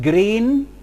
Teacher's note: The mid-high front vowel E, as in green